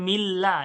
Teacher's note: কিন্তু এখানে মিল্লা এই লামটা বারিক হয়ে গেল কেন একটাই কারণ এই আল্লাহর লামের পূর্বে যখন জের আসবে তখন এই আল্লাহর লামটা বারিক পড়া হবে